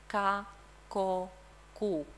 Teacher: When we have a back vowel, I remind you of the trapezium schema. When we have a back vowel, then we choose the velar pronunciation.